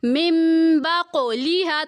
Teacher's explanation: قاف کو ہم پر بھی کریں گے اور قلقلہ بھی کریں گے